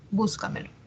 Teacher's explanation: la mayor fuerza de voz está en la anterior a la antepenúltima sílaba